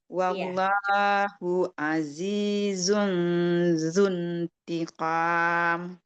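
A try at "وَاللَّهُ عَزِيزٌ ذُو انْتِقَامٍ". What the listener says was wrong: Sedikit lagi zalnya. Coba fokus ke zun. Kita latihan peralihan dari zai ke zal. Coba zun. Pastikan ya, yang ketiga ini dia nggak usah ada Z-nya tuh nggak usah. Sofir dia nggak punya.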